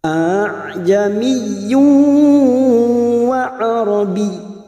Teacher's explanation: Cara membacanya kita lunakkan bunyi hamzah yang kedua. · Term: bacaan tashil